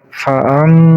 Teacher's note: ma ditasdid, cara bacanya harus ditekan 2 harokat. Fa'am, ditahan dulu 2 harokat.